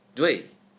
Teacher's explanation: Speed up by reducing the oo sound.